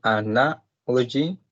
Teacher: The stress is in the second one